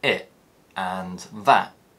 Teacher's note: I often replace the t sound with a glottal stop when it appears at the end of words like it and that. This is known as T-glottalisation, and it occurs when we stop the sound in our throat instead of in our mouth.